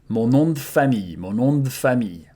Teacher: the final E here in de, you can contract it and devocalize it. Mon nom de famille, mon nom de famille, right?